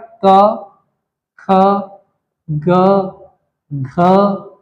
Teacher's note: क ख ग घ यहाँ तक कंठ से उच्चारित किया जाता है